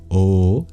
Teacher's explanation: If you transition slowly between them, then that's I. Similarly, the average between a and u is o, halfway in the vowel space, or if you transition, that's ao.